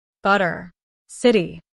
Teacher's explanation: In American English, the T often sounds like a soft D when it appears between vowels. This is known as a flap T.